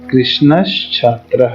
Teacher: तो छ जो है वह च वर्ग का है, तालव्य है। तालव्य होने के कारण से तालव्य श इस स के स्थान पर हो जाएगा